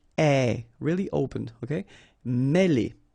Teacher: accent circonflexe here on the top of E, and it will give you the sound E, really open